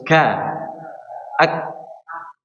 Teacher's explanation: Karena huruf kaf ini bukan mengalir suara tapi mengalirnya nafas, ya. Jadi huruf kaf ini bukan berkaitan dengan mengalirnya suara.